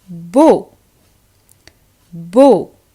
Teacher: is the combination a u and e a u so both of them a u and e a u are pronounced as a closed o sound